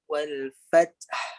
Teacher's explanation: Dia bunyi ha, ada angin. Sifat huruf ha tu angin. Maka wal fath kita keluarkan angin tu.